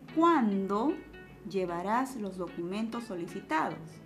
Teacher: no es necesario subir el tono ya que el pronombre interrogativo está jugando el papel importante de formular la pregunta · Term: tono final descendiente